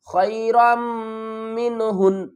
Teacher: وقف کی صورت میں ہم کیا کریں گے؟ نون کو ساکن پڑھیں گے